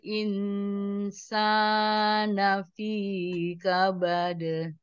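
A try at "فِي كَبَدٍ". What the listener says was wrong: Fi kabad, fi-nya dua saja. Fi kabad.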